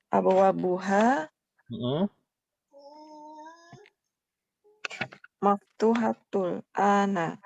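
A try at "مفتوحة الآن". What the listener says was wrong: Maftuhatun al-ana. Maftuhatun al-ana. Maftuhatun kan nggak ada al-nya kan ya? Al-ana itu dzaraf. Atau keterangan waktu ya kan namanya? Abwabuha maftuhatun al-ana. Maftuhatun al-ana.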